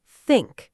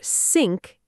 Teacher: The correct way is to keep the tongue tip between the teeth, not pull it back to make an S or Z.